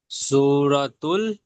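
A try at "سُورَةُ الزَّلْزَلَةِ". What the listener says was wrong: তুল নয় তুস, এখানে শামসির কায়দা, আলিফ লাম দুটোকে বাদ দিয়ে পড়তে হবে।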